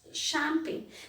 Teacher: CH is not pronounced as Ch, it is pronounced as Sh.